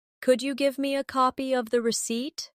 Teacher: Could you becomes could ya in casual speech.